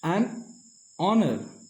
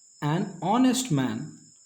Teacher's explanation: The H at the beginning of honor and honest is silent.